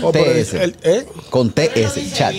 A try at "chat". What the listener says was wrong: No, sin la S, sin la S.